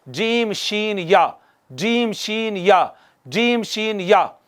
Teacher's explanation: वस्ते ज़बान और तालु मिले तो, या मकाबिल का तालु मिले तो, वस्ते ज़बान और मकाबिल का तालु मिले तो, या यूं कह लें वस्ते ज़बान और ऊपर का तालु मिले तो, यहाँ से हरूफ शजरिया अदा होते हैं, जो कि ये हैं जीम शीन या, जीम शीन या, जीम शीन या।